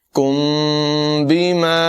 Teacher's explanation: میم ساکن کے بعد حرف با ہے، یہاں پر اخفاء شفوی ہے، غنہ کر کے پڑھیں گے